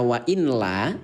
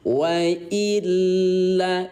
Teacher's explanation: Ingat ayah bunda, idgham itu artinya memasukkan. Apa yang dimasuki Yang dimasuki adalah bunyi nun yang baris mati kepada lam yang bertasdid. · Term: idgham bila gunnah